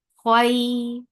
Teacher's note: Kha will be heavy, so lift your tongue up to pronounce this kha.